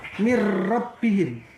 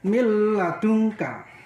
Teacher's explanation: Sehubung ini dibaca idgham bila gunah, maka membacanya harus masuk, tapi tidak disertai mendengung. Ya, cukup masuk aja.